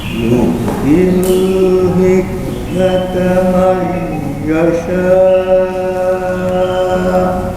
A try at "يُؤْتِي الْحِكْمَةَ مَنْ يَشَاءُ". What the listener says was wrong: Bapak juga hamzahna teu aya antah. Ya sya. Kada aya eta.